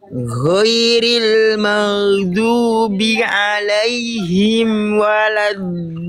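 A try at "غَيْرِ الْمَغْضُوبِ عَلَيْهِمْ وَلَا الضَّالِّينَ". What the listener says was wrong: Oke, pastikan do-nya 6 harokat. Jangan kependekan. Dia harus 6 harokat, lebih panjang lagi. Do, dan jangan sampai vokal O-nya dimonyongkan. Jangan karena do, tapi do. Karena mengangkat bagian pangkal lidah. Ghairil maghdubi alaihim waladdallin.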